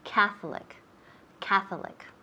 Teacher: the emphasis of accent is on the first syllable